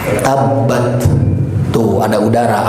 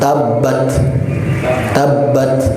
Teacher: Biarkan dengan huruf t tapi dialirkan udara.